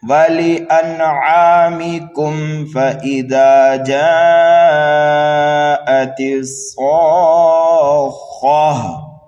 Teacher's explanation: اس کم کے اندر ہم گنہ نہیں کریں گے بلکہ اظہار کریں گے، صاف صاف کر کے پڑھیں گے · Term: اظہار شفوی